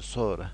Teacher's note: sonra sözündə n samiti düşür, o saiti uzanır. Elə vurğu da birinci hecada o saitin üzərindədir. Sonra. Alim sözündə isə uzanma birinci hecada olsa da vurğu ikinci hecadadır.